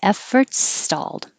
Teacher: When you finish efforts with your S, keep your S going and you go right into stalled. No stopping.